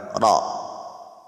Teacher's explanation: Kapag siya ay maftuha, ay dapat sa kanya ay mufakham, makapal.